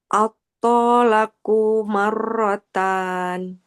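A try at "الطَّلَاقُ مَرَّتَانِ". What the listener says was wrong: At-tolaqu. Kofnya nggak boleh panjang.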